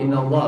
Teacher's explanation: Allah dibaca tafkhim tebal karena sebelum lafaz Allah berbaris fathah Allah dibaca tebal [Musik] inallah Apa itu adalah ikhfa Yain Qadir